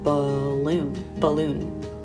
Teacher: The stress is more on the second syllable, right?